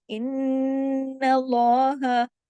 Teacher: نون پہ تشدید ہے، ڈبل نون ہے، بڑا غنہ ہوگا، اکمل غنہ